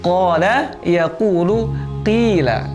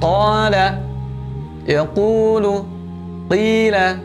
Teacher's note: Keluarnya al-jauf ini dari rongga mulut, rongga tenggorokan. Tidak boleh dari manapun selain rongga mulut dan rongga tenggorokan.